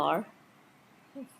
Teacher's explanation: Then Y sound, approximate, voiced, not aspirated.